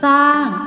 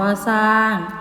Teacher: คําควบกล้ําไม่แท้ควบด้วยหรอเรือออกเสียงพยัญชนะต้นตัวแรกตัวเดียว